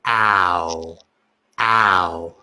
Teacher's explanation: So you're making an oval. With ow, your mouth is completely open. And it's like an ah, short A sound. Ow. A short A sound into an O sound. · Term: OW sound